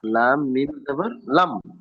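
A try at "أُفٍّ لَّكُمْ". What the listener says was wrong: কোথায় ওখানে লাম মিম পাচ্ছেন? লাম জাবার লা, উফিল্লা। কাফ মিম পেশ কুম, উফিল্লাকুম। ফায়ের নিচে দু পেশ তানবিন এসেছে, তানবিনের পরে ইয়ার মালুনের লাম এসেছে।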